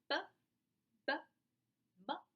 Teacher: p is a voiceless oral bilabial stop. B is a voiced oral bilabial stop. M is a voiced nasal bilabial stop. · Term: bilabial stops